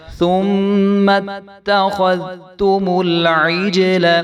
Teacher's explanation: جیم ساکن ہے تو یہاں پہ بھی جیم کے اوپر قلقلہ ہوگا